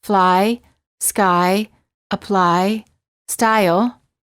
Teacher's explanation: they close a bit when moving to the the I position the tongue is relaxed and it moves from a flat to high position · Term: eye sound